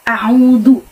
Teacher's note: ada waw sukun sebelum dhammah dan cara bacanya dipanjangkan 2 harokat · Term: mad tabi'i